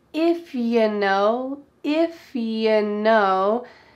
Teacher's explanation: We already talked about how you often becomes ya, but we can reduce you even further to become simply y, that Y sound